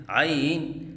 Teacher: لہراؤ کے ساتھ پڑھنا، جیسے عین، یہ غلط ہے